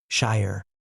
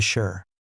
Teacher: In careful speech, shire is 2 syllables, shire. In natural, relaxed English speech, it compresses to shire.